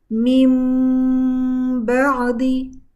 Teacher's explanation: दोनों लिप्स को बंद करेंगे और बंद करने के बाद मीम को हम होल्ड करेंगे। गुना करेंगे और फिर उसके बाद उसके बाद जो नून साकिन तनवीन के बाद बा लेटर आता है। · यानी के सबसे पहले हम नून और तनवीन को मीम में बदल देंगे। और मीम का मखरज दोनों लिप्स जो है उनको बंद करते हैं। क्लोज करते हैं तो उससे मीम अदा होता है। तो हम दोनों लिप्स को बंद करेंगे और वहां पे हम मीम के मखरज पे जाके उसको होल्ड करेंगे। · तो हम दोनों लिप्स को बंद करेंगे और वहां पे हम मीम के मखरज पे जाके उसको होल्ड करेंगे। गुना का टाइम देंगे और फिर जो नेक्स्ट लेटर बा है उसको अदा करेंगे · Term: इकलाब